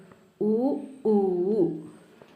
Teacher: ഓഷ്ട്യം അല്ലെങ്കിൽ ചുണ്ടിൻ്റെ സഹായത്താൽ ഉച്ചരിക്കുന്നവയോ ഉ, ഊ